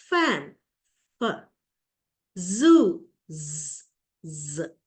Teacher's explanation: so these are examples of fricatives you can hear the friction of these sounds